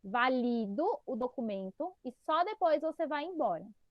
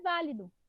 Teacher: Percebam que a mais forte aí é o li, não é o vá.